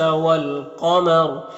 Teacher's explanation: والقمری میں الف لام حروف قمری قاف کے شروع میں تو لام کو پڑھیں گے، الف کو نہیں پڑھیں گے۔ قاف حروف مستعلیہ میں سے پر پڑھیں گے اور را کے اوپر وقف کریں گے تو را کو پر پڑھیں گے اس طرح سے۔